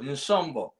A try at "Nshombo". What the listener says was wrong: You got to pronounce the N slightly.